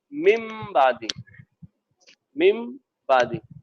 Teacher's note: ہم نے جو ہے تنوین کو میم سے بدل دیا